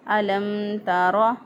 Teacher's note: الم تر، میم ساکن کے بعد نہ میم ہے، میم ساکن کے بعد نہ ہی با ہے، بلکہ میم ساکن کے بعد میم اور با کے علاوہ دوسرا حرف تا ہے، تو یہاں پہ اظہار شفوی ہو رہا ہے۔ میم ساکن کی آواز کو ظاہر کر کے پڑھیں گے۔